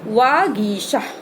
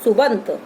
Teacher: पा को हमने बा में बदल दिया, का को गा में बदल दिया। तीसरे वर्ण में पहला वर्ण तीसरे वर्ण में परिवर्तित हो जाएगा।